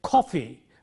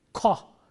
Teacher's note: When you say coffee, the K is aspirated. Ka. It is not coffee, but coffee.